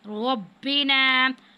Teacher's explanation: رو پر زبر ہے، اس کو پور پڑھنا ہے. ربنا. رو پر کھڑی زبر ہے.